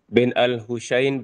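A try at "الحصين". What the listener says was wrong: Saya nak Ingatkan sekali lagi kalau SH ni s s Husain bukan Husain bukan Sin tapi sad betulkan sebutan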